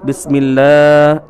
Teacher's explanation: Habib Umar Al-Hafiz membaca bismillah, memanjangkan huruf lamnya dengan mengatakan bismillah, yang sebenarnya adalah bismillahirrahmanirrahim, akan tetapi dipanjangkan menjadi bismillahirrahmanirrahim.